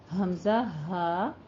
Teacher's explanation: अक्स हलक से हमजा हा, मोटी जरा सी आवाज निकलेगी सीने की जानिब से